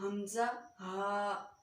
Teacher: हलक के नीचे वाले हिस्से से बारी आवाज़ के साथ